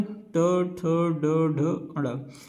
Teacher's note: ट वर्ण का उच्चारण मूर्धा से होता है। इसलिए हम इसे मूर्धन व्यंजन भी कहते हैं।